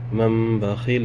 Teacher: تنوین یا نون ساکن کے بعد اگر با آئے تو نون ساکن کو میم میں بدل کے غنہ اکفا کے ساتھ پڑھتے ہیں، اسی کو اقلاب کہتے ہیں۔